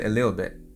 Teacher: With a little, I said a little bit. The T is silent.